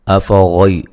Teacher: غین کو موٹا ادا کیا جائے گا